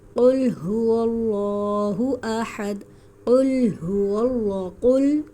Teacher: قل یہاں پر قاف موٹا والا ہے